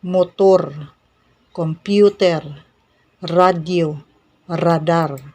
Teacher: you flapped the tongue at the upper roof of your mouth